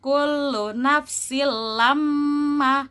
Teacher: Tanwin bertemu dengan lam. Ya, betul, ada idgham bila gunnah. Jadi tidak perlu didengung atau tidak perlu ditahan ya.